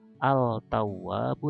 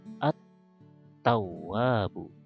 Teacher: Nah, kalau ada ta di sini maka bukan al-tawwabu tapi at-tawwabu ya. Seolah-olah tidak ada alif lam, langsung ke ta, padahal di sini ada alif lam. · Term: idgham huruf syamsiyah